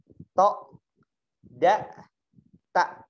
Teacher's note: Jadi kepala lidahnya disentuhkan ke gigi. · Nah, ta ini mendekati gigi. Jadi antara gusi dengan gigi, ya. Antara gusi dengan gigi.